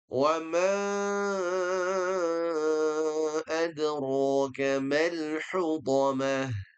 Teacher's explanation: Hurufnya menjadi panjang sekali karena bertemu hamzah. Kita gunakan ee enam harakat saja.